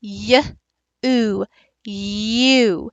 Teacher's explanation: you are having that slight y on there and you're moving over into the oo. You're crossing over consonant to vowel in this one. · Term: diphthong